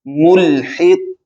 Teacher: اس میں قلقلہ کی بھی آواز آئے گی، اور قاف کو موٹا بھی پڑھا جاتا ہے، قاف مستعلیہ میں سے بھی ہے، ملحق، یعنی اس میں دو صفتیں ہیں، یہ موٹا بھی پڑھا جائے گا اور اس میں قلقلہ بھی ادا کیا جائے گا۔